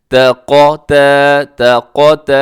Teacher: پہلا تا باریک ہے، قاف موٹا ہے، تا باریک ہے، اس کے بعد جو قاف کے بعد تا ہے وہ باریک ہے۔